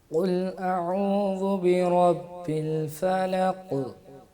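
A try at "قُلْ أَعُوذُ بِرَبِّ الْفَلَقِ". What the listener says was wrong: نہیں بیٹا اس میں دباؤ نہیں دیں گے. فلق یہ تھوڑی سی جو دیر لگا دی نا یہ نہیں کرنی. الفلق الفلق.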